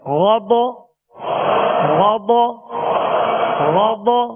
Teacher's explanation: غین زبر غ، ضاد زبر ض، غین ضاد دونوں حروف پر پڑھیں گے، موٹا پڑھیں گے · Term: حروف مستعلیہ